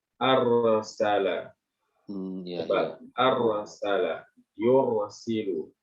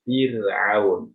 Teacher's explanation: Kemudian ro-nya sukun, sebelumnya ada fathah dan dhammah juga dibaca tebal. Arsala. Tebal.